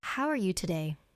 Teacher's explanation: Did you feel how the voice rises at the end? Like a question? That's intonation.